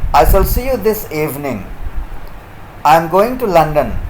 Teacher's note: when it is spoken in a normal manner without any particular or special implication that will be spoken with a falling tone